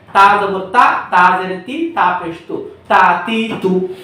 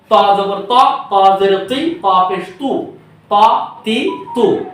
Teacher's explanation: তো এখানে আমাদের মাখরাজের পার্থক্য বলে দেওয়া আছে যে তা হলো জিহ্বার আগা উপরে দুই দাঁতের গোড়ার সাথে লাগিয়ে পাতলা করে স্বাভাবিকভাবে তা, আর ত হলো জিহ্বা লাগা উপরে দুই দাঁতের গোড়ার সাথে লাগিয়ে মোটা করে, মানে এটা ইস্তেআলা বা মোটা ধরে, তাহলে এটা ত।